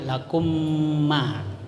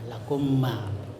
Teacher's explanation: Idgham mimi atau mutamasilain karena sama-sama huruf mim. Jadi menyuarakan mim rangkap, ya, dua mim atau ditasdidkan